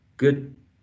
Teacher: It's like we stop the airflow. We do not release the air. Good, and then we release it in the.